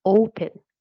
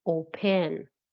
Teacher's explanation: You can see that the last syllable is not stressed. You say open, not open.